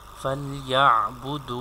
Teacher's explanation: we have to stretch it for 2 seconds because vau is madda letter here. Before vau sakin there is pesh sign, so we have to stretch it.